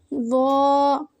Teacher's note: ظا کی ادائیگی میں زبان کی نوک کو سامنے والے اوپر کے دو دانتوں کے اندرونی کنارے سے نرمی سے لگا کر موٹی آواز میں پڑھیں